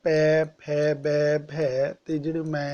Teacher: ਹੋਠੀ ਵਿਅੰਜਨ ਯਾਨੀ ਜਿਨ੍ਹਾਂ ਨੂੰ ਬੋਲਣ ਸਮੇਂ ਹੋਠ ਦੀ ਹੈਲਪ ਲੈਣੀ ਪੈਂਦੀ ਹੈ ਤਾਂ ਉਹ ਆ ਜਾਂਦੇ ਨੇ ਪੈ, ਫੈ, ਬੈ, ਭੈ ਤੇ ਜਿਹੜੇ ਮੈਂ ਆ ਜਾਂਦੇ ਨੇ।